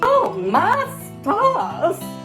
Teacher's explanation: they drop their R's in the classical southern accent area